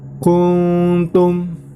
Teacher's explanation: terdapat nun sukun atau nun mati bertemu dengan ta, maka termasuk hukum bacaan ikhfa. Nah, maka cara membacanya adalah dengan mendengung samar.